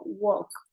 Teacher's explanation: Entonces este walk, por ejemplo, no le suena la L. Suena como una O y no le suena la L.